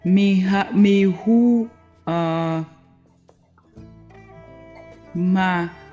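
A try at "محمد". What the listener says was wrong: Mim has zamma, so it is zamma is put wrong place. It is Muhammad. Yes, Muhammadun.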